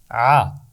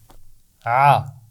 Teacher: اس کا مخرج ہے گلے کا درمیان کا حصہ، حمزہ اور ہا سے تھوڑا سا اوپر رہتا ہے یہ، ٹھیک ہے؟ تو یہاں سے ہم ادا کریں گے آ، اور یہ ایک باریک آواز ہے، آ۔ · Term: عین